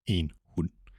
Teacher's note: if a D follows an N, it's muted